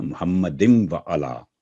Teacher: تو واو پر تشدید ہے اس لیے ادغام غنے کے ساتھ ہوگا، بالغنہ، ادغام بالغنہ، محمد و علی. · آگے کیونکہ واو پر تشدید ہے تو محمد دن نہیں ہوگا، واو کے ساتھ ادغام بالغنہ ہوگا